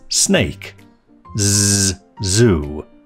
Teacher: The / s / and / z /sounds are alveolar fricatives made by disrupting the air flow through a narrow channel formed by the tip of the tongue and the alveolar ridge